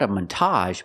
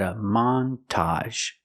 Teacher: we're going to stress both syllables